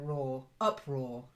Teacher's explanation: pronunciation was okay but the stress is slightly different uproar so the stress is on the up and it's then raw up raw try it that's it that